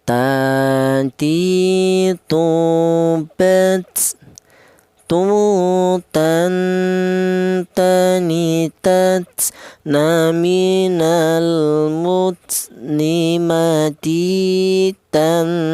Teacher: keluarnya huruf berasal dari ujung lidah menyentuh pangkal gigi seri atas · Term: huruf ta